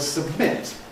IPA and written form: səbˈmɪt (submit)